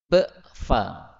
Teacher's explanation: Karena ba itu di bibir, fa juga di bibir. Nah, jadi dua huruf sama-sama di bibir.